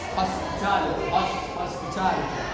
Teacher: This is very common in American English, where the T or D sound between two vowels turn into a quick tap of tongue, sounding like a soft D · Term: flapping